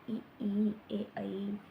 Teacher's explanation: जो स्वर बोलते समय जीभ का आगे का भाग उपयोग होता है उसे बोलते हैं अग्र स्वर